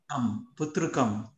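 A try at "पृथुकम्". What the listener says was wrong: Prutukam. Prutukam. Not putru. Prutu. Like Prutvi. We say Prutvi, right? For earth. Prutukam.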